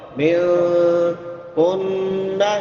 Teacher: یہاں پہ غنہ ہوگا کیونکہ نون مشدد ہے، شاد والے نون پہ غنہ ہوتا ہے۔